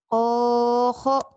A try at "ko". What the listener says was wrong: Ko. Bukan ho ya. Ko.